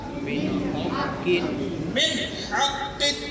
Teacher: نون ساکن کے بعد ہا آ گیا ہے اور ہا حروف حلقی ہے، ظاہر کریں گے